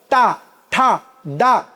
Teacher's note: ಆಕಾಶ ಇದ್ದಂಗಿದೆಯಲ್ಲ ಮೇಲೆ ಅಂಗುಳು, ಅಲ್ಲಿಗೆ ಹೋಗಿ ನಾಲಿಗೆ ಹೊಡಿಬೇಕು, ಒತ್ತಿ ಹಿಡಿಬೇಕು. ಹಾಗೆ ಹಿಡಿಬೇಕು ಅಂದರೆ ಶಕ್ತಿ ಬೇಕು. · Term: ಮೂರ್ಧನ್ಯಗಳು